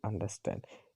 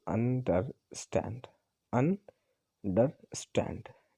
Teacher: टू unstress syllable followed by अ stress syllable as in अंडरस्टैंड। इसमें दो ऐसे syllable होंगे जो अनस्ट्रेस होंगे, दो दो अनस्ट्रेस सिलेबल होंगे, उसके बाद में एक स्ट्रेस सिलेबल होगा, जैसे अंडरस्टैंड, अंडरस्टैंड। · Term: एनापेस्ट